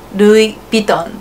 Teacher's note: L will change it to R, V will change it to B, so LV is more like RB, Louis Vuitton.